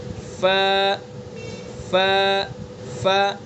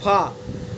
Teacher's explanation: فا کا مخرج ثنایا علیہ کا کنارہ اور نیچے کے ہونٹ کا تری والا حصہ۔ ثنایا علیہ جو اوپر کے دو دانت ہیں سامنے کے، تو ثنایا علیہ کے کنارے کو نیچے کے تر والے جو تر والا حصہ ہے، نیچے کا ہونٹ، نیچے کا ہونٹ کا تر والا حصہ وہاں پر لگائیں گے ثنایا علیہ کے کنارے کو اور ادا کریں گے ف ف ف۔ · تر والا حصہ جو تر ہوتا ہے اندر والا حصہ، وہاں پر ثنایا علیہ کے کنارے کو لگائیں گے اور ادا کریں گے